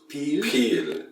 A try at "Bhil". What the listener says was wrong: With a B. Bhil.